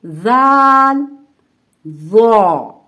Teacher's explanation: जबान का सिरा यानी कि जबान की नोक, जब हम जबान की नोक को ऊपर के सामने वाले 2 दांतों के सिरे यानी उसके किनारे से थोड़ा सा बाहर रखेंगे तो ये तीनों हरूफ सही तरीके से अदा होंगे। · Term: हरूफ लिसाविया